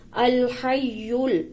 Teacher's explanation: ہا کو حلق سے نکالیں گے